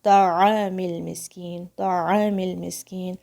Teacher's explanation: تو کی آواز بہت بھاری ہے، سب سے بھاری ساؤنڈ ہے تو کی عربک لینگویج میں. اس کو آپ نے اس طرح سے ادا نہیں کرنا ہے کہ جیسے ہونٹوں کو گول کر دیا اور اس میں فالس دمہ کی جیسے فیلنگ آ گئی کہ جیسے اس میں دمہ ہے.